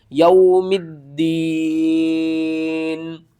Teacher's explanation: یوم الدین، دال کو ہم نے 2 بار پڑھنا ہے، ایک بار میم کے ساتھ ملانا ہے، دوسری بار ہم نے یا کے ساتھ ملانا ہے، ٹھیک ہے۔ واو ساکن سے پہلے زبر ہے، حروف لین ہے، جلدی کے ساتھ پڑھنا ہے